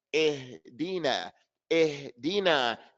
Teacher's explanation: When you read the ya, from the middle of your tongue to the tip of the tongue, there's some firmness.